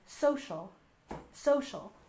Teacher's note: we emphasize the first syllable in social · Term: stress